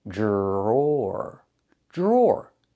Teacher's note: The dr makes a J sound like in juice and jump. Plus the R.